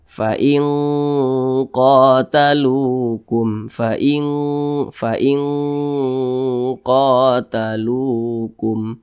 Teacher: Nah, cara membunyikannya itu didengungkan, kemudian juga disamarkan, akan tetapi dia kadar dengungnya itu kuat, jadi lebih condong berbunyi eng begitu. Fa'il, nah jangan fa'il, jangan, tapi lebih condong berbunyi eng. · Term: ikhfa hakiki ab'ad